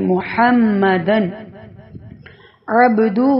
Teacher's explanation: تنوین کے فوراً بعد حروف حلقی میں سے عین آ گیا ہے، تو اس لیے اظہار کر کے پڑھ رہے ہیں ، یعنی ظاہر کر کے پڑھ رہے ہیں کہ محمدن عبدہ